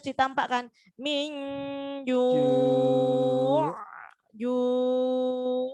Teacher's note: Ju' kalau berhenti gitu harus ainnya harus ditampakkan min ju' ju' enggak boleh minju tapi harus minju harus ainnya harus ditampakkan.